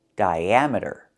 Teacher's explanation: we link the two vowels, the I and the A, with the Y sound, like in yellow and yesterday.